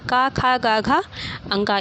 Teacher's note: ख का उच्चारण स्थान क्या होता है कंठ